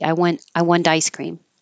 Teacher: The T is between two voiced sounds, the N and the I, so it could sound like a D.